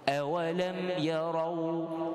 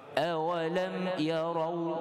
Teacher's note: bacaan awalam itu tidak ada dengung, izhar. Kita panggil izhar syafawi.